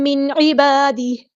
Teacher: نون ساکن کے بعد حروف ہلکی میں سے عین آیا ہے، تو ہم یہاں پر نون ساکن کے آواز کو ظاہر کریں گے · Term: اظہار